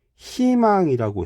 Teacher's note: 자음을 첫 소리로 가지고 있는 음절의 의는 이로 발음해야 한다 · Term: 의 발음